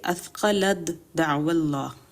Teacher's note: دوسری مثال بھی یہی ہے تا کا دال میں ادغام، جیسے اثقلت دعو اللہ، تو اس میں تا کی آواز نہیں آئے گی، وہ دال میں مرج ہو جائے گا اور صرف دال کی آواز آئے گی